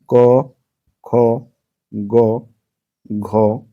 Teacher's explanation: उच्चारण के आधार पे ये इनका उच्चारण जो होगा तो ये कंठ में होंगे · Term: कंठ धनिया